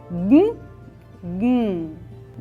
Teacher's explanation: उच्चारण ह्रस्व होगा और यहां एक और बात समझने की है ये जो गु का उच्चारण है यह नासिका में गुंजायमान होता है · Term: अनुनासिक